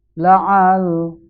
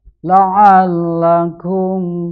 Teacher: maka suara ainnya harus ditekan kepada suara lam. La'al, tapi tidak dibaca panjang. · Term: huruf lam di tasdid